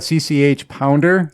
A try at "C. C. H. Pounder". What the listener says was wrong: So, fun fact, I don't know if this is true, but according, once again, to the commentary, she claims that it's not CCH. It's actually just CC. And this H is silent.